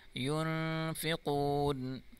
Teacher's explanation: نون ساکن کے بعد فا ہے اور فا حرف اخفا ہے اور اخفا کی معنی ہے غنہ کرنا